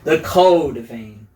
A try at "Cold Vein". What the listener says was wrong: The Code Vein. Cold Vein. Like you're like it's cold, but you're saying code. Cold.